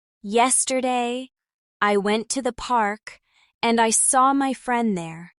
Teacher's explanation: The pause after yesterday and park gives the sentence a nice flow.